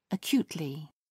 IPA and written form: əˈkjuːtlɪ (acutely)